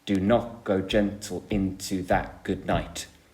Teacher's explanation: iambic meter so you could talk about that it goes um unstressed stressed unstressed stressed